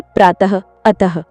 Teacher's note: अह का उच्चारण ह की हल्की ध्वनि के साथ होता है, जैसे प्रातः, अतः।